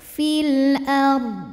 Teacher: tafkhim karena huruf sebelumnya fathah maka D tebal fil ARD dan Dod harus tetap terbaca tapi jangan memantul